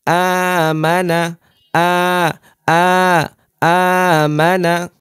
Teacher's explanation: যেহেতু এখানে আমাদের মাদের হরকত এসেছে আমরা এক আলিফ করে টানছি